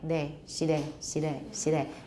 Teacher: It's an L. So initial L in 闽南语 often ends up to be something like de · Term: lateral tap